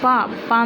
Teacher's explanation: प में ओष्ट प में अपने होठ मिलते हैं